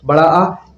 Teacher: जिस स्वर के उच्चारण में मुह सबसे अधिक खुलता है अर्थात पूरा खुलता है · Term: विवत स्वर